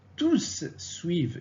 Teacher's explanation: Ici, au masculin pluriel, le S s'entend. On prononce le S.